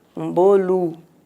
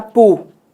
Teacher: O O, quando é átono, a gente pronuncia U